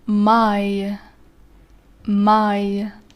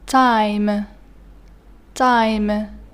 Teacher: And the last diphthong in this column pronounced like this: I, starts with a and ends with e